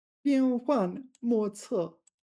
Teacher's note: That's 4 fourth tones right there, isn't it?